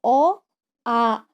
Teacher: अब देखिए आ, अ से थोड़ा दीर्घ उच्चारण हो रहा है ना आ की, इसलिए उसको दीर्घ मात्रा बोला जाता है